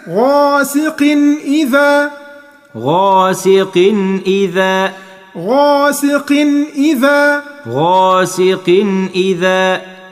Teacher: بص تحت قاف هتلاقي تنوين، علامة التنوين الشرطين بتوعه متساويتين، كل تنوين العلامة بتاعته متساوية كده، شرطين التنوين متساويتين كده، يبقى ما عندكش غنة، يبقى هنا هيبقى فيه إظهار، واسمه إظهار حلقي